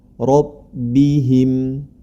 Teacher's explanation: Ro yang kedua berharokat fathah, maka dia juga dibaca tebal. Bi ayati rabbihim, dibaca tebal.